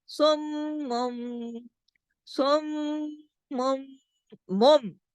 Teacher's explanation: میم پہ اچھا خاصا غنہ کریں گے، کیوں؟ کیونکہ میم کی صفت ہے غنہ